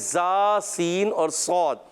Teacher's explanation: زبان کی نوک اور اوپر ثناء سفلی اور ثناء علیٰ کے اندرونی کنارے سے ادا ہوتا ہے زا, سین اور صاد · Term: حروف اصلیہ